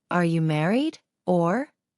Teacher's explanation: did you notice the or at the end you stretch out the sound of the ore this has the effect effect of softening the